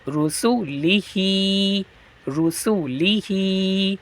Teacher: ہا پہ کھڑا زیر ہے اسے بڑھائیں گے